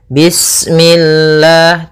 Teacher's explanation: lafal Allah ketika sebelumnya kasrah maka dia dibaca dengan tipis, ya, dengan L.